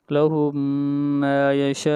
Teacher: شین کے اوپر مد متصل ہے اس مد کو 3 الف کے برابر کھینچا جاتا ہے